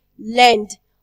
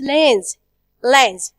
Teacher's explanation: we pronounce the final sound D we say land but with the plural form it's lens